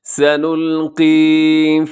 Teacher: یہاں آخر میں یا مدہ ہے، تھوڑا سا کھینچ کے پڑھیے گا۔